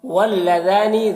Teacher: ذال کو باریک پڑھنا ہے، کھڑا زبر ہے، اسے ایک الف کے برابر کھینچ کر پڑھیں گے